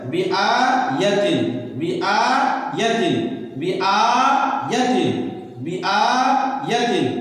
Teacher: آ یا کو جلدی پڑھیں گے زبر ہے